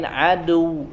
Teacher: dal aduh setelah huruf Ain Aduh di sini huruf Dal ya huruf Dal jelas dia tekanannya dari ujung ujung lidah ya bukan dari sisi-sisi